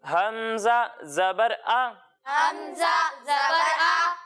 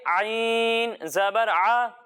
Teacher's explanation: اور عین کی ادائیگی ہم ہا کی طرح کریں گے، یعنی جس طرح ہم نے ہا کی ادائیگی حلق کے درمیانے حصے سے کی تھی اسی طرح عین کی ادائیگی بھی ہم حلق کے درمیانے حصے سے کریں گے